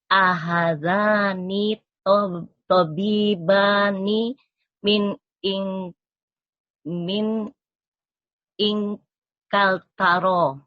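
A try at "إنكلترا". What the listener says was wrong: Ya, ingkaltaro, ro-nya ada tasydidnya. Ingkaltaro gitu, Bu.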